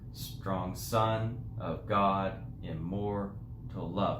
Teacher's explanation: it's unstressed stressed unstressed stressed unstressed stressed